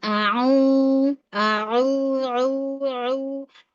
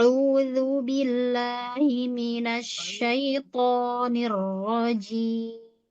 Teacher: untuk huruf ain dijernihkan semuanya ya. Jernih dalam arti tidak ada ghunah. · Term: Jernih tanpa gunah